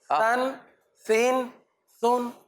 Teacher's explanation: زبان کے سرے یعنی نوک کو اوپر لگانا ہے اور بغیر سیٹی کے اس کو ایسے پڑھنا ہے